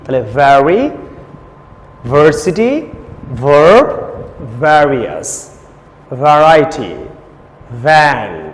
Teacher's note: তাহলে উপরে দাঁত আর ঠোঁট, ভুলেও ঠোঁটে ঠোঁট যেন না লাগে, খেয়াল করবেন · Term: দাঁতের ঠোঁট